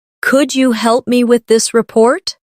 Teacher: The words help and report carry more weight in the sentence. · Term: stress